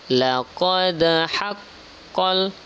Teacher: Pada ayat ke-7 ini terdapat qalqalah. Karena dia berada di tengah kalimat, maka namanya qalqalah sughra, pantulannya sedikit.